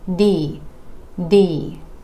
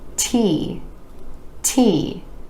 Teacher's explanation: You want to make sure that there's a tiny puff of air releasing with the T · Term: air puff sound